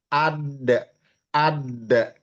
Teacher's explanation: dal tadi bertemu dengan langit-langit bagian depan di belakang gusi gigi seri atas